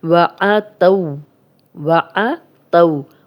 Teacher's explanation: یہ واو لین ہے، جزم والی واو پیچھے تا پہ زبر، یہ بغیر کھینچے نرمی سے پڑھتے ہیں۔